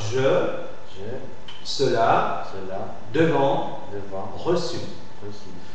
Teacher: elle est euh antérieure mi ouverte mi fermée arrondie · C'est une voyelle pour la définition, une voyelle orale, d'accord, orale. Elle est antérieure, mi-ouverte, mi-fermée, arrondie. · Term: e muet, E muet